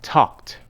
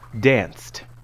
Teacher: don't add an extra syllable the e in ed is silent the sound is voiceless you don't use your voice to say you don't feel vibration here